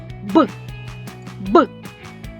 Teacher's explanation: так ми відчуваємо що горлечко сильно тремтить наш голос працює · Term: дзвінкий